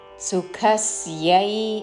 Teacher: సుఖ మహాప్రాణాక్షరము ఖ దాని మీద ఆఘాత